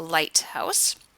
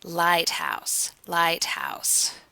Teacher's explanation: for a Canadian, we use these two mid-central diphthongs, I and ow · It's obviously something we Canadians do as opposed to the Americans, and it's called raising because we raise our jaw up. We don't drop our jaw quite as low as the Americans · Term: Canadian raising